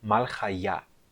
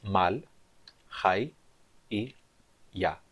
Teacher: A sílaba tônica é a sílaba ya no final.